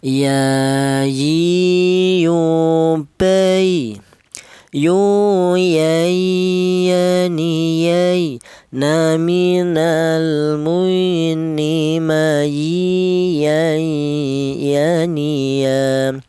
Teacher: keluarnya huruf berasal dari tengah lidah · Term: huruf ya